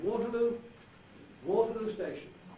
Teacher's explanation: you knock out what was the chief stress before, what was the main stress, and you don't even stress that syllable at all.